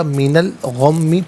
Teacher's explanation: من میں نون ساکن ہوگا لیکن جب ملا کر پڑھیں گے نون پر زبر ہوگا، اس سے الغمی کی لام ساکن کے ساتھ ملائیں گے، درمیان میں سے الف یعنی حمزہ کو حذف کیا جائے گا